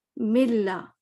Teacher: تو آپ کو غنہ نظر نہیں آیا, اس کا مطلب ہے نون بالکل ختم